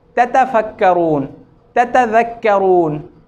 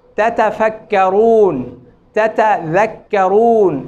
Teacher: ایک بات اور جو تا کے متعلق ہے, عربی زبان میں جو صحیح ادائیگی ہے تا کی, اس میں یہ ہے کہ تھوڑا سا تا کی ادائیگی میں ابتدا میں کچھ سختی ہوتی ہے ادائیگی میں, اور انتہا میں تھوڑا سا نرمی ہوتی ہے. مثلا تھوڑا سا ہوا نکلتی ہے تا کی ادائیگی میں, ات ات ات. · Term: صحیح تا